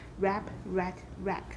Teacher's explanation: without a glottal stop and with the final stops unexploded